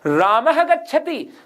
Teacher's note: म पे तो कम जोर आया और ग पर ज्यादा जोर आया है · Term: बलाघात